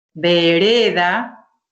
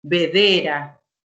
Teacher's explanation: ubicó la D anterior y la R la puso siguiendo. Entonces hay un cambio en el orden. No hubo sustituciones, no hubo omisiones, ¿sí? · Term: metátesis o inversión